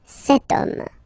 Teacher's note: as in French, H is not pronounced, so the first sound that we hear is O, okay, and then it will follow the same rule.